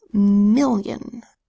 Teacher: M says I says I, L-L says O, the second I says y, because it's in an unstressed syllable, where this O is making an unstressed vowel sound, a schwa sound, and then the N says n.